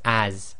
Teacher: even though in English it's got an S, but it's a Z sound